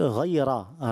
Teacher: रा यहाँ पुर करना होता है, मोटा पढ़ना होता है